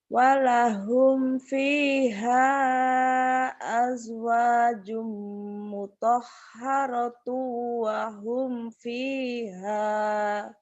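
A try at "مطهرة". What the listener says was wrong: Tuh, H ini bagus. H ini tadi kamu kecil ya. Coba dari mutahharah. Mutahharah tuh.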